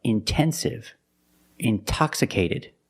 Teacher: we have the stress after the NT we pronounce the T like a pure T